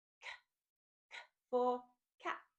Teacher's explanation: The next letter is C, and the hard sound for this letter is K. Notice this is a voiceless sound, so there is no sound, no voice, just air.